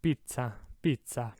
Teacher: double z hold it out twice as long